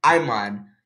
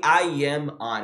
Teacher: Tá vendo que eu linkei o M com o O aqui, ó? I'm on. Então, eu não falei I am on. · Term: linking words